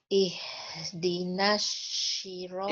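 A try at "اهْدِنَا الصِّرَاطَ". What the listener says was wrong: Ya, yang Ana ingin titik bahasan yang Ana ingin bahas adalah shotnya, Bu ya. Shotnya ya lebih condong ke sya, Bu. Ya. Lebih condong ke sya. Sya yang ini loh.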